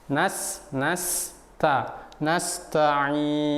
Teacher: huruf Ta ini adalah huruf yang tipis tidak boleh kita tebalkan